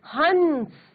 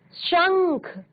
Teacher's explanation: तो प्रश्वास जो है वो वायु नाक से बाहर निकलती है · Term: अनुस्वार